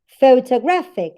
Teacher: Gra here is the strongest syllable in the word. That's why it has the primary stress.